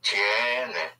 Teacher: you push down on the E and it splits into IE